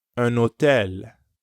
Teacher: when un is followed by a vowel sound, you do pronounce the N, like in un hôtel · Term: liaison